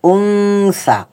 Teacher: দন্তন্য টাকে এখানে অনুস্বরের মত পাতলা আওয়াজে পড়েছি এটার কারণটা হচ্ছে নুন সাকিনের পরে সা আসার কারণে এখানে দন্তন্য টাকে অনুস্বরের মত উচ্চারণ করতে হচ্ছে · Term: ইকফার নিয়ম